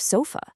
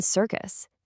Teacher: it's just a really weak, kind of lazy, unstressed vowel sound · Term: schwa